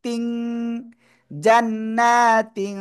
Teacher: নাকের ভিতর নিয়ে গোপন করে উচ্চারণ করব